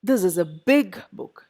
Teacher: big is the adjective book is a noun both get stressed